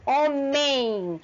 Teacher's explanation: esse último M tem som de I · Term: semivogais